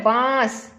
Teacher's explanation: यह है बांस, ऐसी साउंड आ रही है ना। इस तरह की जब साउंड आती है तो वो अनुनासिक होता है, मुंह और नाक दोनों से इसमें आवाज निकलती है